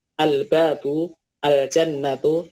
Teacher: jadi lam sukunnya terbaca dengan jelas, tidak dileburkan, karena tadi huruf makhraj lam dan huruf setelahnya berjauhan. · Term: al-qamariyah